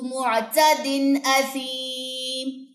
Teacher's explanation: تنوین کے بعد حمزہ آ گیا، غنہ نہیں ہوگا، اظہار ہوگا یہاں پہ، ٹھیک ہے. اظہار کا قاعدہ اپلائی ہو رہا ہے.